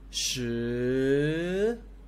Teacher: It's going up, so you have to raise or rise the tone.